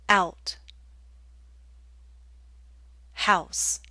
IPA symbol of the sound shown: aʊ